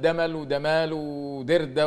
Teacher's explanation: في كثير من المناطق في صعيد مصر ينطقون الجيم دالا